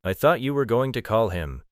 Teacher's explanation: The stress on you suggests a contrast.